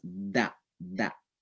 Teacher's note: yaitu langit-langit disentuh oleh ujung lidah